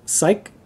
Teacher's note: when it's at the end of a word it's pronounced more like a k or ck ending